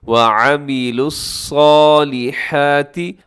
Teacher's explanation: حرف ہے صاد، اسے آپ نے موٹا پڑھنا ہے اور ہر صورت میں موٹا پڑھنا ہے